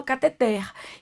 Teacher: cateter é uma oxítona, porque a última sílaba é tônica. Oxítonas terminadas em R não são acentuadas.